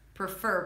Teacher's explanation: Prefer. Primary stress on the second syllable.